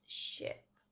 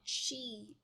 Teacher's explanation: It's like the E sound, but our mouth is going to be more relaxed for the I. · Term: I sound